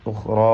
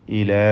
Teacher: ഉഖ്റാ എന്ന് പറയുമ്പോൾ അലിഫും ഇലാ എന്ന് പറയുമ്പോൾ അലിഫും, ഒന്ന് തഫ്ഖീം മറ്റേ തർഖീഖ്, അതാണ് വ്യത്യാസം. ഉഖ്റാ ഇലാ, ഈ രണ്ട് അലിഫിനെയും മദ് മുൻഫസിൽ ജായിസ് നൽകി 4-5 ഹറക്കത്തിൻ്റെ അളവിൽ ദീർഘിപ്പിക്കൽ അനുവദനീയമാണ്.